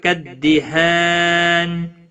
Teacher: تنوین کے بعد حروف اخفا کا کاف ہے، اخفا حقیقی ہوگا، گنہ کے ساتھ پڑھیں گے